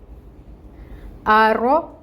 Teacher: رو کو مفخم پڑھا جاتا ہے، یعنی موٹا ادا کریں گے، پر پڑھیں گے۔ تو رو کو ہم پر کریں گے اور اس کی حرکت کو 1 کاؤنٹ ہی ادا کریں گے۔